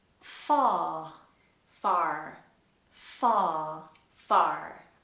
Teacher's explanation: we have to flatten the AR and in most cases we ignore it altogether if it's not at the beginning